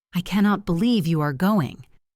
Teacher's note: I cannot believe you are going. Emphasis on believe and going. A rising and falling pitch shows genuine surprise and excitement.